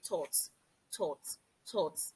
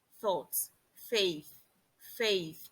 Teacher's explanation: this is a sound you articulate with the tip of your tongue placed in between your lower and upper teeth. Most times we pronounce this sound as T due to our mother tongue interference.